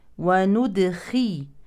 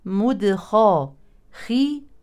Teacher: الخاء حرف مفخم هنا مكسور من اقل مراتب التفخيم وهنا مفتوح من المرتبه الثانيه